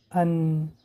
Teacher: وقتی که ما ان می‌گوییم نوگ به ریشه دمان‌های بالا می‌رسد · قسمی از هوا از دماغ می‌براید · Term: حرف نون